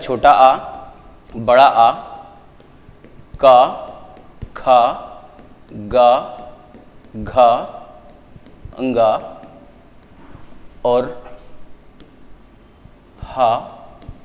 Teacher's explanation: यह इतने वर्ण हैं केवल पूरी वर्णमाला में केवल इतने ही वर्ण है जो कंठ से बोले जाते हैं